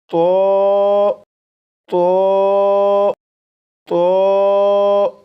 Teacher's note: زبان کی نوک اوپر سامنے کے دو دانتوں کی جڑ سے لگا کر پڑھے گا۔ نمبر دو، آواز کو موٹا کر کے پڑھے گا، جیسے تو تو تو 4 مرتبہ پڑھے گا۔